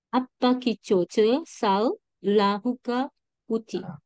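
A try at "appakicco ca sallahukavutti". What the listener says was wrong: Start from the second L as a separate word. First L is gone for the first one. Sal lahuka vutti.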